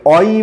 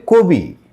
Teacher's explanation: অ এর পরে যদি ই ধ্বনি থাকে তাহলে সেই অ এর উচ্চারণ ও এর মত হবে